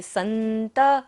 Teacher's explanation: त के ऊपर विसर्ग है तो सारा सांस का विसर्जन करेंगे।